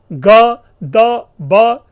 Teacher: ग, द, ब, जिसे हम घोष और अल्प प्राण कहते हैं